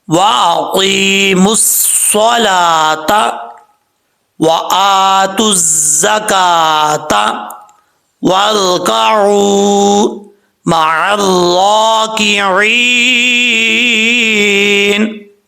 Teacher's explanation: واؤ کو پڑھتے وقت ہونٹ گول کریں گے, واؤ کے بعد را ہے, را ساکن سے پہلے زبر ہو تو را پر پڑھا جاتا ہے. عین کو کلیئر کریں گے, عین کو حمزہ کی آواز نہیں آنی چاہیے. عین کے بعد واؤ ہے, واؤ ساکن سے پہلے پیش تو واؤ مدہ ہوتا ہے, ایک الف کی مقدار لمبا کر کے پڑھیں گے.